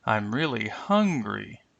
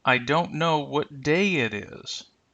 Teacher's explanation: notice how the pitch will rise and then deeply fall at the end of the content word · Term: rising and deep falling intonation